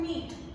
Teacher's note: जैसे हिंदी में मैंने आपको बताया था कि छोटी की बड़ी की मात्रा में, छोटी की मात्रा सपाट है जैसे आप बोल सकते हैं मीट, उसमें स्वर ऊपर नहीं जाता और ज्यादा समय नहीं रुकना पड़ता